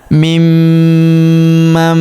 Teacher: Nun sukun bertemu huruf ma berharakat tasydid. Maka nun sukunnya melebur ke huruf ma yang berharakat tasydid. · Huruf ma berharakat tasydid maka kita tahan dan kita tekan serta kita dengungkan dua sampai 3 harakat karena terdapat tanda tasdid di atasnya.